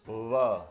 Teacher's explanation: So the labiodental approximate is kind of like a V because you use your teeth, but it's also like a W because they never actually touch your bottom lip